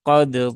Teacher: tetapi qodu nah seperti itu ya tidak boleh di idgham kan Ya harus dibaca dengan izhar jadi dalnya wajib diqalqalahkan